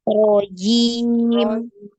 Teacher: Jimnya jangan sampai ada desis ya, jangan ada hamas ya, tidak ada aliran nafas yang alir ya. Nirrojim, jangan nirrojim, tapi rojim.